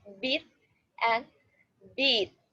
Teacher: These vowel sounds in both words is the high front tense vowel E. but in beat, the vowel is a little longer.